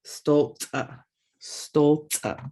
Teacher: Then you got the glottal stop, stopping the whole word.